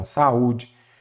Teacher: Duas vogais que ficam em sílabas separadas. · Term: Hiato